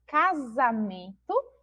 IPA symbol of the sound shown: z